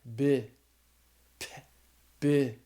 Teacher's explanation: Your voice box vibrates when you say the beta. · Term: voiced